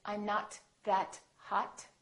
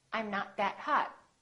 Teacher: you need to hold the T at the end to have a more American accent